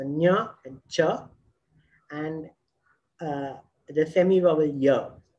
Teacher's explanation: Then we have the palatal sounds, which are the tongue brushing against the roof of the mouth.